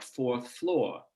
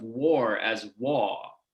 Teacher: the stereotype of new york speech as being r-less so not having an r in words like fourth and floor so that they might be rendered something more like fourth floor